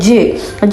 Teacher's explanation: സോ അതൊരു അഫ്രിക്കേറ്റീവ് ആണ്. അതുപോലെ ജ് result from the plosive ഡ് plus ഫ്രിക്കേറ്റീവ് ഷ്. So ഇവ തമ്മിലുള്ള മിക്സറാണ് ജ് ആയിട്ട് പുറത്തേക്ക് വരുന്നത്. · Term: അഫ്രിക്കേറ്റ് സൗണ്ട്സ്